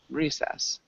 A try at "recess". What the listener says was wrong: Close. It sounds like you're saying zess instead of sess.